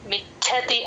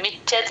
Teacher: మిచ్ఛతి అంటేనే మీకు మహాప్రాణం వినిపిస్తుంది మిచ్చ అంటే వినిపించదు